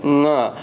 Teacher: जब हम इसको बोल रहे हैं तो जो प्राणवायु वो नाक से बाहर आ रही है। तो यहाँ भी हम लोगों का उच्चारण स्थान जो होगा वो नासिका होगा। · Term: पंचम अक्षर